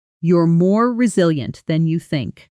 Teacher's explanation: Listen to how the pitch rises slightly on resilient, the most important word, and then falls gently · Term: gentle rise and fall